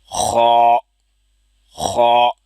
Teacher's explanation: ان کو ادا کرتے وقت منہ کو گول نہیں کرنا، یعنی ہونٹوں کو گول نہیں کرنا، ان کو صرف موٹا کرنا ہے۔ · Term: موٹے حروف